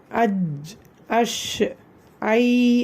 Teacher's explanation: நாக்கோட நடுப்பகுதியில இருந்து வெளிப்படுது அப்படின்னு நல்லா உணர்வீங்க இதுல வந்து ஷீட சத்தம் வந்து நல்லா வாய் முழுக்க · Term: ஜீம் ஷீன் ய